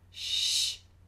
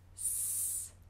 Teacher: An SH should be rounded lips. Sh, an S, s, smiled.